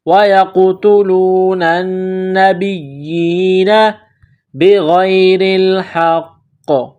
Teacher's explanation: ناک میں چھپائیں گے، با کو یا کے ساتھ ملانا ہے، یا کے نیچے 1 کڑی زیر ہے، 1 الف کے لمٹ میں کھینچنا ہے